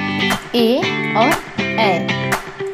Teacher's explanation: इसे कंठ तालव्य कहा जाता है, अर्थात ए और ए का जब हम उच्चारण करते हैं तो हमारा कंठ और तालव्य दोनों सक्रिय होते हैं।